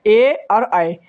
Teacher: ये दोस्तों कंठ से और तालू से दोनों से बोले जा रहे है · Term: कंठ तालव्य